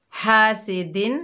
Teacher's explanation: ہا بالکل بھی واضح نہیں ہوئی اور سین کی جگہ ثا پڑا